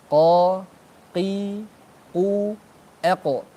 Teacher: Kalau qaf itu bersentuhan dengan langit-langit atas yang belakang yang lunak.